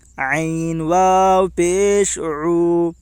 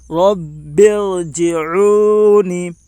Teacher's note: جیم کے نیچے زیر ہے، زیر کو جلدی پڑھیں تھوڑا بھی نہ کھینچیں، معروف پڑھیں مجہول آواز سے بچیں۔ واو ساکن سے پہلے پیش ہے اس لیے واو مدہ ہوگا، واو مدہ کو ایک الف کے برابر کھینچ کر پڑھیں